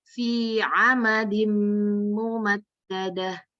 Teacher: Ini mimnya langsung ke ma aja, Bu, nggak ada tasdidnya